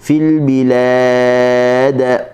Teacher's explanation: Lam dibaca dengan nipis. Dal apabila kita berhenti dengannya maka dia jadi sukun kerana li ajlil waqfi, kerana kita waqaf maka kena bunyi qalqalah.